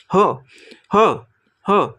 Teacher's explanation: ह वर्णाचा उच्चार करताना छातीतील हवा तोंडावाटे वेगाने बाहेर टाकली जाते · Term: महाप्राण